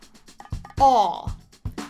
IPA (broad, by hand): ɔ